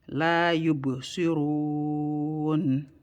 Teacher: so we're gonna hold that noon for 1 second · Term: noon sukun